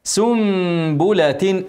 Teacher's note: عليها سنابل اكسر الباء في كل اكسر اللام سنبله اقلاب تاني نون ساكنه بعدها باء والعلامه ميم بديل هنعمل غنه